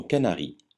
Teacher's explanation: Le N se prononce ne comme dans Canari, jamais nasalisé comme dans éléphant